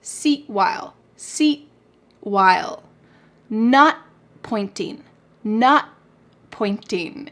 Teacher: My tongue is at the top of my mouth, but I'm not letting that puff of air come out. It is stopped in my mouth.